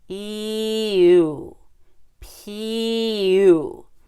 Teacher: if we went from E to U we would add a y